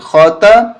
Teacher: خا کو حلق سے نکالیں گے